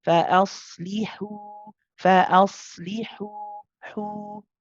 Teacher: you hear the breath, you round the lips for the dhamma.